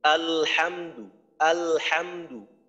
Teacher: যেমন দেখেন আমরা পড়ি আলহামদু, আলহামদু, আলহামদু, এই যে লামের আওয়াজটাকে আমি চালু রাখতেছি, খেয়াল করেন আলহামদু, আলহামদু, লামের মাখরাজে যাওয়ার পর কিন্তু আমি আওয়াজটাকে বন্ধ করে দেই না। আলহামদু, লামের আওয়াজ চালু থাকতে থাকতেই হা এর উচ্চারণ করি, আলহামদু, আলহামদু।